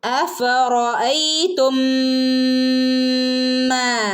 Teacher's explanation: അഫറ ആണ്, അഫറ നമ്മൾ മലയാളത്തിൽ പറയുന്ന പോലെ അഫറ റാന്ന് പറയരുത് കേട്ടോ. റാ അല്ല, റോ. അറബിയിൽ റോ എന്നുള്ള ഉച്ചാരണമാണ് വരിക